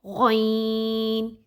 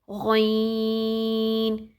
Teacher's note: यह हमारा जो हलक का वो हिस्सा जो कि मुंह की तरफ है वहां से अदा होगा। जहां से ख अदा होता है। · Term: गइन